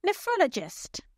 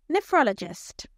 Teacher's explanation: the third syllable is stressed